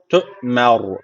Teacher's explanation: Duracağımız zaman ayet veya sonunda ayet veya durak sonunda duracağımız zaman son harf cezimli oluyordu. Ra harfi cezimli oldu. Öncesine karşı üstten bağlandığı için ra harfi burada kalın okunacak. TER bu şekilde duruyoruz.